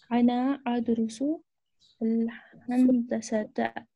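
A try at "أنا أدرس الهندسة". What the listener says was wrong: हंदसा, बहुत अच्छा,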